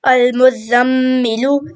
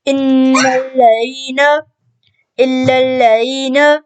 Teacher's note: اب نون مشدد پہ بھی غنہ ہوتا ہے اور غنہ ناک میں آواز چھپانے کو کہتے ہیں